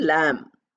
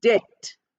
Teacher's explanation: B is not pronounced. It is silent. So we say lamb, and the sound ends there.